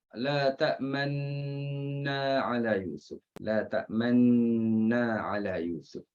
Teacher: ismam tu isyaratkan dengan munculkan bibir mulut untuk menunjukkan huruf di situ sudah dihilangkan, iaitu nun yang berbaris dhammah.